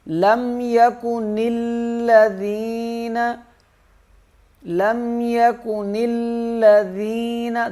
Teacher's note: ذال نرم پڑھا جائے گا، اس میں زا کی آواز نہیں آئے گی